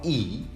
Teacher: the vowel E is exactly to be considered as high, front, and unrounded vowel